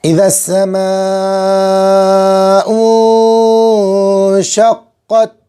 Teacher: قاف پر تشدید ہے، قاف کو 2 مرتبہ